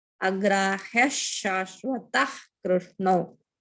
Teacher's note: If visarga, if the middle of the pada, the visarga followed by ka, we have to say ha sound from the throat